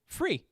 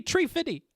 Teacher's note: the th sound can be replaced with f